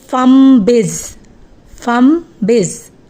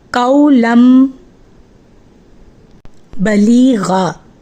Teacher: نون ساکن اور تنوین کو میم سے بدل دیتے ہیں، یعنی پھر ہم نون ساکن اور تنوین کی آواز نہیں نکالیں گے، ان کو بالکل اس کو میوٹ کر دیں گے اور ڈائریکٹ پچھلے حرف کو میم کے ساتھ ملا دیں گے. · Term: اقلاب